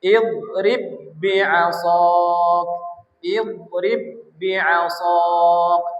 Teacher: Ba pertamanya dimasukkan ke huruf ba kedua. Nah, dilebur. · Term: idgham mutamasilain shaghir